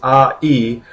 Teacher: The E is pronounced kind of closer to your teeth and the lips of your mouth a is a little bit further back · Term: dip thong